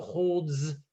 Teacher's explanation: holds actually ends with a Z sound